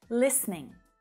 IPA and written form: 'lis niɳ (Listening)